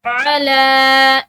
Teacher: लाम के ऊपर खड़ी ज़बर है तो इसको एक अलिफ की मिकदार खींच कर पढ़ेंगे।